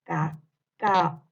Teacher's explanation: se separan dos vocales abiertas, en este caso la vocal A y la vocal O,